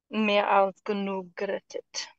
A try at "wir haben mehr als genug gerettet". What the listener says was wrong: I didn't wir hear haben. The first. Yeah, wir haben. Mehr als